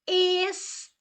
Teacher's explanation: nós temos aqui que a sílaba tônica é a última, ela é oxítona